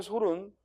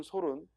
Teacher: 소나무의 솔은 짧게 발음하고, 반면에 먼지를 털 때 쓰는 솔은 길게 발음합니다.